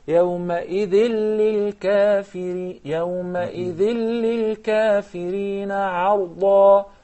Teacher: Remember, because the lam is preceded by tanween, so there is idgham but without ghunnah. We jump immediately from the tha into the lam without any ghunnah.